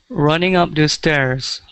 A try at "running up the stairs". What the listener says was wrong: All right, much better.